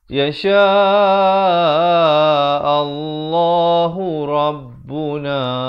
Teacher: Dibacakan tebal lafaz jalalah ini. Datang sebelumnya baris fathah.